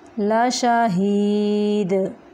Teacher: دال کو ساکن کرتے ہوئے کلکلا کریں گے